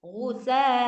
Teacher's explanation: Kalau misalkan ketemu ada hamzah kemudian dia fathatain dan kita mau berhenti di situ, maka harus dimadwatkan. Nah, bacanya harus jadi fathah kemudian dipanjangkan dua harakat.